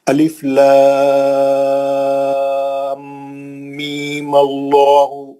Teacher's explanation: میم پہ زبر دے کے اللہ کو ملائیں گے تو یہ جو میم کا جو مد تھا 6 حرکت والا وہ کینسل ہو گیا